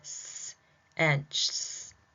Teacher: they're fricative because you can hear that S hissing sound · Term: fricatives